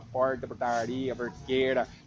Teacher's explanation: aquele R assim, retroflexo, né, tal